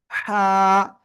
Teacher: Just গলাটা চেপে আপনার এক আলিফ টেনে উচ্চারণ করব। গলা চেপে চিকন আওয়াজে হবে।